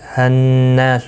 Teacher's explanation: نون مشدد پر غنہ ہوگا، نا الف مدہ ہے، 1 الف کی مقدار کے برابر کھینچ کر پڑھیں گے.